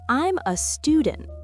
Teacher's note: Stress the first syllable of student. And notice how every sentence has this rhythm, strong parts and weak parts.